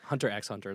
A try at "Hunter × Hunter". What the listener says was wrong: No, actually. No, actually you don't say the X.